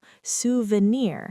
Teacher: This word comes from French. And we stress the final syllable